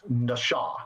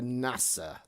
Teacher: The u the first uh consonant is the same as NASA, but the second consonant is very different. It's an sh sound rather than s sound. And the vowels are pronounced a bit different.